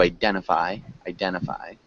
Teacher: there's something that we kind of do in English as well we might swallow that t sound